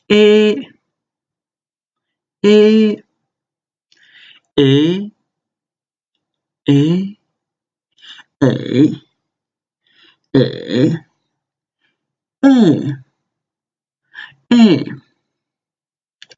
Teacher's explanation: The E sound is sort of between actual AE sound and an E sound, so it's not E or A, like that, but it's E.